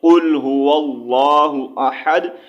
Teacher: ایک قاف ہے حروف مستعلیہ میں سے ہے، ٹھیک ہے، اس کو موٹا پڑھا جاتا ہے